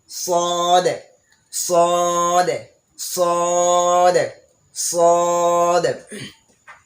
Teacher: সদের মাখরাজ হচ্ছে জিহ্বার আগা সামনের নিচের দুই দাঁতের গোড়া ও পেটের সঙ্গে লাগাইয়া, জিহ্বার আগাটাকে সামনের নিচের দুই দাঁতের পেট ও গোড়ার সঙ্গে লাগবে।